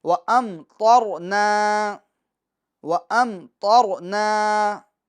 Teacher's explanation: اب دیکھیں ام کے میم ساکن میں اظہار شفوی ہوگا، کیونکہ میم ساکن کے بعد نہ تو با آ رہا ہے نہ تو میم آ رہی دوسری، ٹھیک ہے، بلکہ تو آ رہا ہے، تو لہٰذا ہم میم ساکن میں کیا کریں گے، اظہار کریں گے، یعنی میم ساکن میں گناہ نہیں کریں گے، اور تو کو بھی پور کریں گے اور را کو بھی پور کریں گے